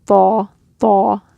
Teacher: what makes it heavy is that you're raising the back of your tongue